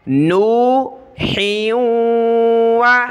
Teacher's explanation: ہا کو واو کے ساتھ ملائیں گے، ناک میں آواز پیدا ہوگی